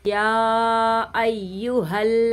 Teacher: मद मुनफसिल हो रहा है, इसको 3 अलिफ की मिकदार पहले हम खींचेंगे, फिर हम इसको पढ़ेंगे।